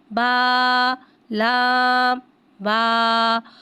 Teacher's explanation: با کو ایک الف یعنی دو حرکات کے برابر کھینچ کے پڑھیں گے. لام کو ایک الف یعنی تین حرکات کے برابر کھینچ کے پڑھیں گے